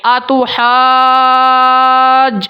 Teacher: ہا کے اوپر جو مد تھی میں نے مکمل کی ہے، پھر میں نے جیم کو ساتھ ملا لی ہے